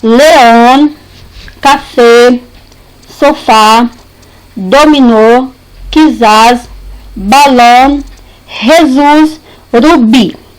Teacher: As palavras agudas ou oxítonas são aquelas cuja sílaba tônica mais forte é a última